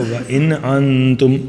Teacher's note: پہلے نون ساکن کو ہم نے جلدی سے پڑھا وَإِنْ أَنْتُمْ، تو دوسرے کو اخفا کیا، ہولڈ کیا، اس لیے کہ پہلے نون ساکن کے بعد حروف حلقی میں سے حمزہ آ گیا اور دوسرے میں حروف حلقی نہیں ہے، لام اور را نہیں ہے، تو اس لیے ہم نے یہ کیا۔